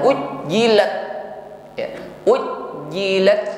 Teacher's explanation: huruf ta, maka hamsnya tampakkan harus ada nafas yang mengalir ya, jangan tertahan ujjilat ya.